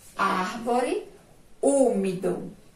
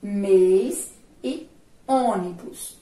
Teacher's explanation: o acento agudo, ele apresenta mais um som aberto. Já o circunflexo, ele apresenta mais um som fechado.